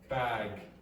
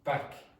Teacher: So one is a longer vowel than the other and one is voiced and the other is not.